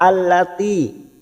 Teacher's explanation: Allati ada kasrah bertemu ya sukun 2 harokat